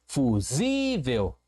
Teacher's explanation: Fusível paroxítona por ser a penúltima sílaba tônica